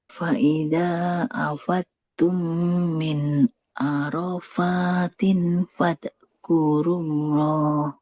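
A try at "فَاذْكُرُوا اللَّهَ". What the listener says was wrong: Oke, yang ini jangan fadkurullah ya. Huruf dal kan dia nggak masuk huruf qalqalah ya. Nah, huruf dal itu mengalir suaranya. Fadkurullah. Nah, coba Ibu ujung lidahnya menempel ke ujung gigi seri yang ke atas. Kalau huruf dalnya saja za, za ya, zi.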